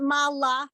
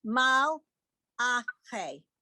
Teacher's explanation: it's not Mala, but Mal Ah. You have to really stop.